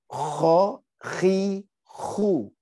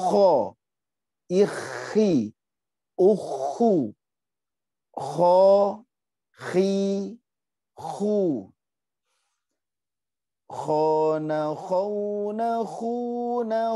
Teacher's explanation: Bukan makhraj berikutnya, tapi masih di makhraj ujung tenggorokan. Ini mirip gho, tapi lebih terdengar lebih kecil, seperti orang ngorok